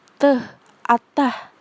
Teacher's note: Fonem T cara artikulasinya adalah plosif atau letupan, dan tempat artikulasinya di alveolar. Alveolar itu punggung gigi atau belakang gigi.